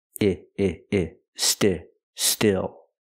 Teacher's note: Use the short I like this is. It's a more open sound.